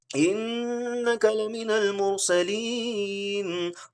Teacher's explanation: गुना means नेसलाइजेशन। उस आवाज को आपको नाक में लेकर जाना है। नून को यहां पे हम नाक में लेकर जाएंगे।